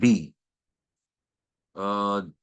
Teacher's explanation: The letter B is a plosive, vibrating labial sound. So it's a plosive, vibrating lip sound. Plosive as in explosive, as in explode.